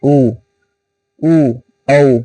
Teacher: जैसे उ औ औहे आप बिना मुख को गोल के भी उच्चारण कर ही नहीं सकते। उच्चारण में मुख पूरी तरह से गोल होता है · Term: वृत्त मुखी स्वर